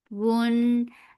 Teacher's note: This ikhfa is light. You are preparing your mouth to say za. You are keeping the sound in your nose.